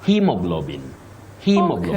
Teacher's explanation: So you say he with a long high front sound, E.